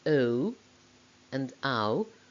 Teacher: O and ow, which both glide towards a closer vowel, U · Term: closing diphthongs